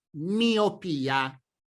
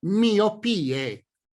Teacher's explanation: in italiano l'accento tonico della parola miopia cade sulla seconda I